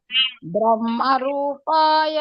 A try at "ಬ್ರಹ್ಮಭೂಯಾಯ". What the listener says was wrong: ಬ್ರಹ್ಮ ರೂಪಾಯ ಅಲ್ಲ, ಬ್ರಹ್ಮ ಭೂಯಾಯ.